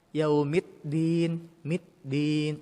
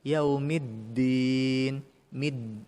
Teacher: huruf dal ketika tasydid itu wajib ditekan bunyinya. Tapi jangan sampai berbunyi huruf ta.